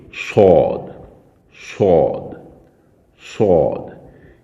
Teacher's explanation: صاد کو زبان کی نوک کو سامنے کے جو نیچے والے 2 دانت ہیں ان کی جڑ سے بھی تھوڑا نیچے رکھ کر ادا کریں گے اور تھوڑا موٹا پڑھیں گے